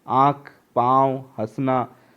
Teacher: उच्चारण करते समय वायु नाक और मुख दोनों से निकलती है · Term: अनुनासिक